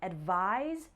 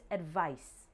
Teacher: There's also a pronunciation difference. Advise has a Z sound and advice has an S sound.